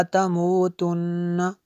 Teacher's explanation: نون مشدد ہے اس لیے یہاں پہ غنہ ہوا۔